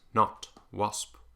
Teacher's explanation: It's basically an ah with a rounded lips. Not, wasp. In general, American dialects use the open, unrounded version of this.